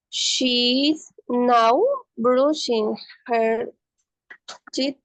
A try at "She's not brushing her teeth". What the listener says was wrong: Ponemos una fuerte cierre cuando pronunciamos la T. She's not brushing her teeth, okay?